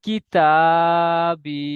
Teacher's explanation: ইয়া সাকিনের ডান দিকে জের এসছে, এটি হলো ইয়া মাদ্দা, ইয়া মাদ্দাকে এক আলিফ পরিমাণ টান দিয়ে পড়তে হয়